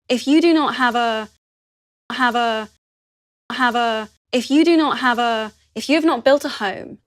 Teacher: you'll hear her glottis reopening just before the h sound